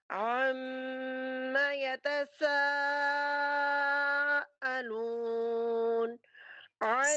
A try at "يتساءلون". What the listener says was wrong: سین کی آواز نہیں آئی ، سا کی آواز آئی ہے. یتس یہ والی آواز آئی آپ کی سیٹی کی.